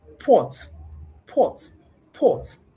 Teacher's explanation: But if I want to produce port, port, port, unconsciously, because of the rounded nature of or that succeeds p, even at the point of saying p, I already have rounded lips